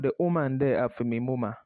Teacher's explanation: So the th sound becomes de, a heavy D sound.